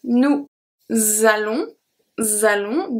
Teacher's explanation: The S from nous is going to be transferred to allons and makes a Z sound. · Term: link